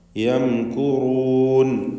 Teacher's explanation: ഈ പദത്തിലെ സാക്കിനത്തായ മീമിനെ ഇൽഹാർ ഷഫവി നൽകി മണിക്കാതെ വെളിവാക്കുക.